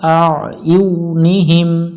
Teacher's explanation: একটু গলা চেপে উচ্চারণ করব